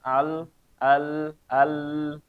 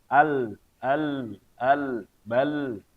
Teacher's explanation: lam itu panahnya ke kiri kanan ya, bagian depannya nggak ada, bagian depannya kosong panahnya ya, karena suara ini merayap kiri kanan ya. Misalnya kita mengucapkan al, nah bagian depan ini suara nggak bisa ke sini ya. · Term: Inhiraf